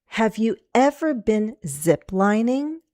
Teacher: Ever and ziplining are two key words, two content words. Ziplining is my focus word, and that's where I'm going to go down just a little before I go up. When we do rising intonation, you're going to bounce down. · And we have zip lining, 3 syllables. I'm going to go down on the stressed syllable zip